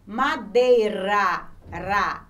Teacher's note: Já o som do R entre vogais é diferente. Ele tem um som fraco. Observe quando eu falo madeira, ra.